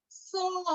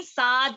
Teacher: सौद को मोटा पढ़े, साद नहीं